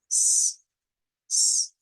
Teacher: la S silbante o sin vibración, que es como la S del español, s, y la S vibrante.